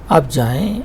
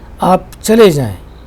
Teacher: you speak it in such a way that you are angry and your sound is quite loud